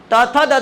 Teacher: દાંતે જીભ સ્પર્શ એટલે દંત્ય